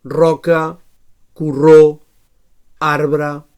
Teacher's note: So alveolar vibrant sonor